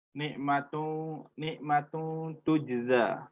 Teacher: itulah ikhfa tu disembunyikan bunyi nun mati itu tidak jelas artinya tidak bunyi Nun itu bersih seperti yang asal tetapi disamarkan ke huruf ikhfa yang sesudah nya